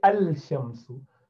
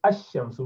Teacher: You do not say al-shamsu. You say ash-shamsu without pronouncing lam. So that is why the letters that you can go straight onto without pronouncing lam there, they are called shamsi letter, ash-shamsu.